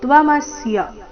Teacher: ತ್ವಮಸ್ಯ ಮೇಲೆ ಆಘಾತ ಮೂರು ಅಕ್ಷರ ರಸ್ವ